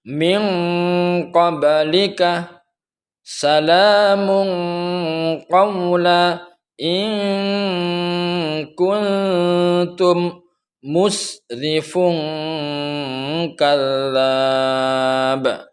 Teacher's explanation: Nun itu berada di lidah bagian depan, sedangkan qaf di lidah bagian belakang, qaf dan kaf di lidah bagian belakang. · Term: ikhfa ab'ad